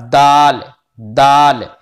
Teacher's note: सिरा जबान ऊपर के सामने वाले दांतों की जड़ से ता दाल ता अदा होता है,